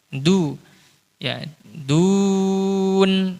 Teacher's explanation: Upayakan kalau huruf wawu ya huruf wawu itu monyong, apalagi sebelumnya dhammah du monyong